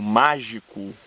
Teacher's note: a última palavra mágico é proparoxítona logo a sílaba tônica dela é má é a anti penúltima